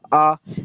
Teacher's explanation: الف کے اوپر مد لگا ہوا ہے تو اس وجہ سے الف کھینچ کر پڑھا جائے گا